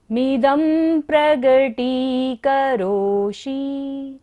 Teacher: द के ऊपर बिंदी है और बाद में क्या है प्रगति, प वर्ग है, तो क्या होगा बिंदी का उच्चारण म